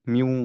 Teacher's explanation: আমরা এটাকে মার্জ করে ফেলবো তার মানে ওয়াও পড়বো খেয়াল করি নুনকে আমরা আর পড়ছি না নুন কমপ্লিটলি সিন থেকে বাদ কিন্তু আমাদের একটা নেজাল সাউন্ড আসতে হবে